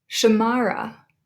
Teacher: we have three syllables there and we emphasize the second one